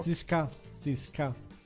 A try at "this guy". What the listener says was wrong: By pronouncing correct THs. This guy, not cis guy.